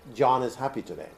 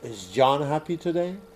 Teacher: it's kind of a flat intonation but when it's a question it's a rising intonation